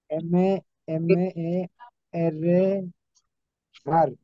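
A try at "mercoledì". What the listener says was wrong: মের, মের, মার হবে না, মের, এম এ এ এর, মের।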